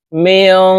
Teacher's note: নুন সাকিনের পরে ইকফার হরফ শিন আসছে এই কারণে এই নুন সাকিনকে নাকের ভিতরে লুকাইয়া গুন্নার সহিত পড়ব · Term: ইকফা গুন্না